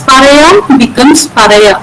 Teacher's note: the word final coda mu gets deleted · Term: coda deletions